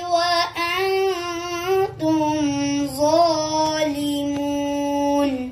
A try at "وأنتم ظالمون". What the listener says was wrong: नाक में मुंह को पढ़ो ज़ो पे सीटी थोड़ी सी आपकी आई वअन्तुम ज़ालिमून